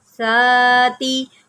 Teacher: ساتھ کے اوپر آپ نے سیٹی نہیں آنے دینی، اس کو نرمی سے پڑھنا ہے